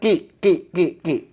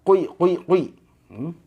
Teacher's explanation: Q itu pangkal lidah nempel ke langit-langit yang lunak